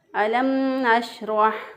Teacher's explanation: ये शीन की अदायगी का तरीका है कि शीन की अदायगी में ज़ुबान का दरमियान ऊपर के तालु की तरफ उठ जाता है, तो इस तरह शीन अदा होगा।